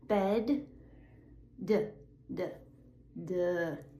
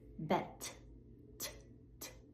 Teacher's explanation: bed d d duh You're using your voice. bet t t You're not using your voice. It's just air.